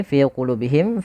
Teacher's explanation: fi dan lu itu kedua-duanya mad tabi'i. Kita panjangkan dengan panjang dua harakat